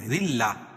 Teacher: را باریک پڑھی جائے گی، کیوں؟ را کے نیچے زیر ہے